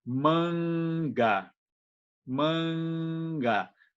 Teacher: a gente articula essa nasal nesse contexto, perto de K ou perto de Ga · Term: velar